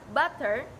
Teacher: flap ini dihasilkan ketika lidah dengan cepat menyentuh punggung alveolar, seperti contoh kata butter.